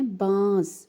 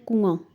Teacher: اور ایک دوسرا لفظ کنواں، اب یہاں پر دیکھیں نون لکھا ہوا ہے لیکن ہم نون کی آواز کو ناک میں لے کے جا رہے ہیں، اس آواز کو ظاہر کر کے نہیں پڑھ رہے۔ کنواں، ہم اس کو بول رہے ہیں کنواں، حالانکہ نون لکھا ہوا ہے لیکن پڑھا نہیں جا رہا، اس کو چھپایا جا رہا ہے۔